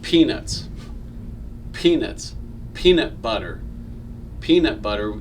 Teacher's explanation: the pea comes out a lot harder than the b but even saying butter you can feel a little bit of air coming out of your mouth right so p b k t those are plosive consonants now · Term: plosives